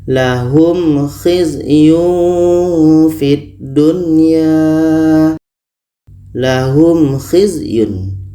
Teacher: Seterusnya kha dalam surah Al-Maidah ayat 33 ini. Ada mim mati bertemu kha. Ini izhar syafawi. Dua-duanya harus dibaca jelas dan tidak dengung.